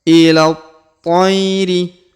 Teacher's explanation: Perhatikan huruf ila, huruf la langsung disambung masuk ke huruf to yang berharokat tasdid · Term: alif lam syamsiyah